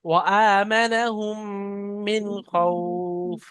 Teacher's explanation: ফালইয়া, আচ্ছা এখানে ওয়া আমানাহুম, মিমটা তো গুণনা হবে তাসদিদ থাকার কারণে, কিন্তু নুন সাকিনের পরে খ এসছে হরফে হালকির মধ্যে, তাই বিনা গুণনায় জাহির করে পড়তে হবে